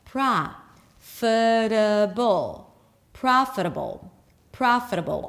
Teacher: Most of the word is comprised of schwas. · Pra, although it's spelled with an O, it's the open ah sound.